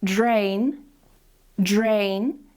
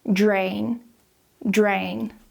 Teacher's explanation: To know if you're doing vibration or not, just put your hand here on your throat and you should be able to feel it vibrating. So if we take the word drain, drain, we're pronouncing it with that j sound.